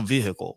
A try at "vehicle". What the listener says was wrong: You pronounce the H so harshly. You're like vehicles.